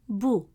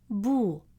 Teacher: The letter ba with a short vowel dhamma makes a sound bu short and round with your lips rounded. Then when we add wow to stretch the sound it becomes bu a longer version of the same sound.